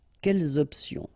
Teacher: the concept of this liaison is that you don't make any pause between the two words